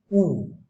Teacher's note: উ, তারপরে সংবৃত, সংবৃত তো বটেই, মুখ খুলছে না, মুখটা বিশেষ খুলছে না, সেই জন্য সংবৃত। · বর্তুল মানে মুখটা রাউন্ড হয়ে যায়, ঠোঁটটা দেখো রাউন্ড হয়ে যায়